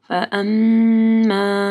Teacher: میم کے اوپر شد ہے، یہاں پہ غنہ ہوگا اور الف مدہ کو پڑھنا ہے.